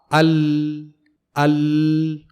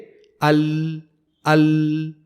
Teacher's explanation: حرف لام زبان کے سامنے کے حصے اور زبان کی دونوں کروٹوں کے درمیان سے ادا ہوتا ہے، نہ کہ زبان کی ایک کروٹ سے